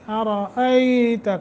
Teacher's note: ایتا حمزہ ہے، یا ساکن ما قبل فتح حرف لین بنتا ہے، نرمی کے ساتھ 1 سیکنڈ کی یا 1 الف کے برابر مد ہوگی